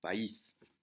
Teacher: aunque la A y la I formarían un diptongo porque es fuerte y débil, la carga está en la I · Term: romper el diptongo